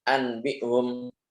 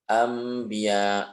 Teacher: nun sukun atau tanwinnya ini diubah menjadi huruf mim disertai dengan gunnah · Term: iqlab